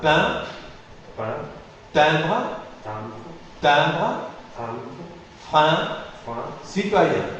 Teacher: une voyelle antérieure, mi-ouverte et non arrondie. Elle n'est pas arrondie. La seule différence, donc, par rapport à la voyelle est ouverte, la seule différence, c'est qu'elle est nasale, elle est oronasale. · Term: voyelle nasale